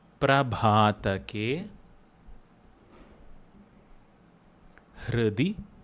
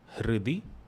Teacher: that R is a vowel distinct from U or E.